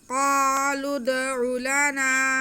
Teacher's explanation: क़ाफ पे ज़बर है, साथ में अलिफ है। हम क़ाफ को खींच लेंगे क्योंकि ये अलिफ मद्दा है। आगे लाम पे पेश है और उसके बाद जो लफ्ज़ आ रहा है उसका दाल साकिन है, तो लाम का पेश हम दाल के साथ मिलाएंगे।